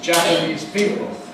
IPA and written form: ˌʤæpəniːz ˈpiːpl̩ (Japanese people)